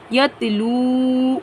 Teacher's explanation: واو ساکن سے پہلے پیش ہے، یعنی واو مدہ کو ایک الف کی مقدار کھینچ کر پڑھیں گے